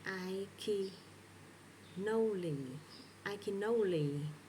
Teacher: We connect this n to the next vowel. · the final consonant goes to the beginning of the next word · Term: linking